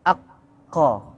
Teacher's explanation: jadi yang mendekat ke arah kerongkongan itu qaf